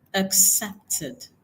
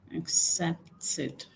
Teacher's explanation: the ed there changes to like e that's the short e sound